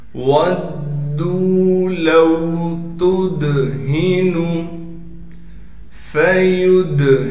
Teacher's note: نون کے بعد حروف مدہ ہونے کی وجہ سے نون کو ایک الف کی مقدار کھینچیں گے